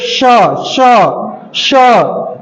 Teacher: इनके उच्चारण में हमको संघर्ष यानी ये घर्षण करके निकलते हैं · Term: संघर्षी या उष्म व्यंजन